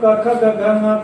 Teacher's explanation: 5 बच्चे 25। तो कु मतलब क ख ग घ ङ का उच्चारण स्थान कंठ